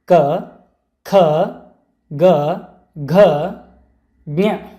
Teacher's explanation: ಕ ವರ್ಗದ ಅಕ್ಷರಗಳು ಕಂಠಭಾಗದಲ್ಲಿ ಹುಟ್ಟುವುದರಿಂದ ಅವು ಕಂಠ ಅಕ್ಷರಗಳು, ಅಂದರೆ ನಮ್ಮ ಗಂಟಲಿನ ಭಾಗದಲ್ಲಿ ಹುಟ್ಟುವಂತಹ ಅಕ್ಷರಗಳು ಇವು. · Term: ಕಂಠಾಕ್ಷರಗಳು